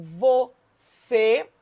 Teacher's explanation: em você, a sílaba tônica recaiu sobre a última, né, o C. Portanto, oxítona terminada em E.